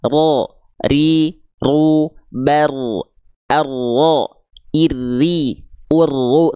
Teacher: tetap getarannya tetap tegas lugas dan jelas bukan berarti getarannya hilang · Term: takrir